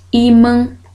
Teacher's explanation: ela é uma palavra paroxítona, a sílaba tônica é a penúltima, o I, que se separa ali.